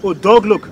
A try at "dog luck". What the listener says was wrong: Not look. Luck. L-U-C-K.